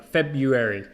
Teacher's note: you don't need to say the r